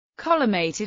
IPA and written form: ˈkɒɫɨˌmɛɪ̯tɨd (Collimated)